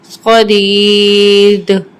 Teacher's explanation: وقف کی صورت میں دال پہ ہماری آواز پلٹ کر آئے گی کیونکہ دال حروف قلقلہ کا حرف ہے. صدید.